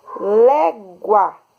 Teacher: se eu digo légua eu tenho um ditongo oral o som saiu pela boca